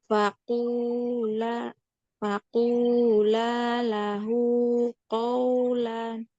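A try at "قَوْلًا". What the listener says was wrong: Qawlan. Lan masih ngalir tanwinnya itu DP bunyi DP bunyi terakhir itu masih ada aliran suaranya qaulan. Faqula lahu qawlan.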